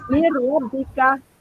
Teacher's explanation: hilangkan bunyi nun tu. Terus masukkan kepada huruf ra. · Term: idgham bila gunnah